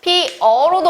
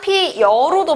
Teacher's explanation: 발음 과정에서 반모음 이가 어를 만나서 여가 된 것이다. 따라서 여기에는 반모음 이가 첨가되었구나 라는 걸 알 수 있습니다. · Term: 반모음 이 첨가